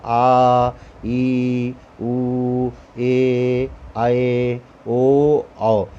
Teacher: जिन स्वरों का उच्चारण करते समय ह्रस्व स्वरों से लगभग 2 गुना समय लगता है। अर्थात ह्रस्व स्वर छोटे होते हैं, कम होते हैं, मुंह से निकलते ही समाप्त हो जाते हैं, कम समय लगता है, परंतु दीर्घ माने बड़ा। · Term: दीर्घ स्वर